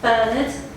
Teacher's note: deliberately placing the stress on the first syllable of his surname